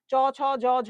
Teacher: এগুলো উচ্চারণের জন্য তোমার জিহ্বা তালুকে স্পর্শ করছে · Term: তালব্য